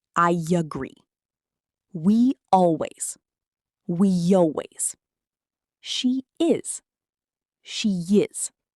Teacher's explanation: when a word ends in an e sound like me or we or she, native speakers add a small y sound before the next vowel.